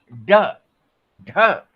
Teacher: जीभ का जो अग्रभाग है, वो तालू के पास जाता है, झटके से उसे छूता है, स्पर्श करता है, और स्पर्श करने के साथ ही वो क्या होता है, वो टकरा करके पीछे चला आता है। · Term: उच्छिप्त व्यंजन